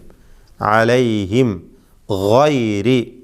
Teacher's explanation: ഹൽക്കിയായ അക്ഷരമാണ്, തൊണ്ടയിൽ നിന്നും ഉത്ഭവിക്കുന്ന ഹർഫാകുന്നു ഗൈൻ.